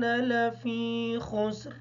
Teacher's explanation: خا کو موٹا پڑھیں گے، سین کو ادا کرتے وقت خیال رکھیں گے صاد کی آواز ادا نہ ہو۔